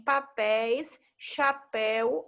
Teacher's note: a primeira vogal que está junto a outra ela vai ter um som mais aberto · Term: ditongo aberto